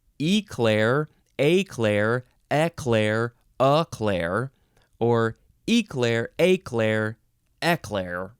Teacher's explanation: you can either emphasize the first syllable or the second syllable and then you can pronounce the first vowel different ways